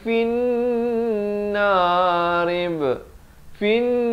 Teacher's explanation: fin 2 harakat dengung